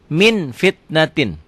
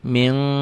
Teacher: bunyi m, tapi min bibirnya kebuka sedikit, bindeng tetap. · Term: Ikhfa